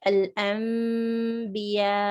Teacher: There's a noon followed by a ba, so that noon is converted into a meme. You would see a small meme written on top of the letter noon to indicate that you're not pronouncing noon, you're rather pronouncing the meme, and with a ghunna of 2 counts, because a ba came after. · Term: iqlab